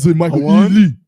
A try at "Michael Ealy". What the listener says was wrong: You didn't say Ely. You said Ely. You said Ely. You put an emphasis on the Lee. the emphasis is on the E. Because it's Ely. Michael Ealy. It's Ely.